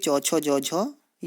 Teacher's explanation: जिन्हें तालव्य भी कहा जाता है क्योंकि इसका जो आपकी जीभ की तालु होती है उससे इनका उच्चारण होता है